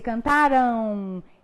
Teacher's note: Esse ditongo é nasal, né? Porque quando você pronuncia cantaram, ele sai muito mais por via nasal do que por via oral